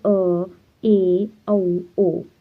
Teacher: अर्ध विवृत यानी half open हो गया है, जिनमें स्वरों के उच्चारण में मुख द्वार आधा खुलता है